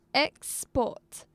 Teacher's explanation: So we put stress, we emphasized on the first syllable, not on the second.